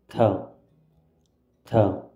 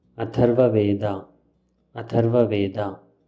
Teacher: This is aspirated ta sound used to write Sanskrit words.